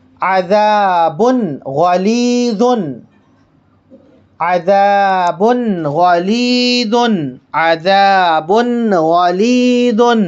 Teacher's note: تنوین کو ظاہر کر رہے ہیں ہم